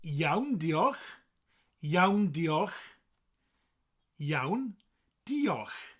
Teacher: Diolch is, well, it's got that CH at the end, that sound. Comes from the back of your throat.